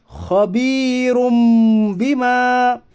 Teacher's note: را کے اوپر دو پیش کی تنوین ہے، دو پیش کی تنوین کے بعد با آیا اس لیے اقلاب ہوگا، یعنی دو پیش کی تنوین کو میم ساکن سے بدل کر غنہ کے ساتھ پڑھیے